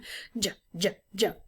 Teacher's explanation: It's one of those sounds that kind of bursts out, but has some friction at the same time. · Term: affricate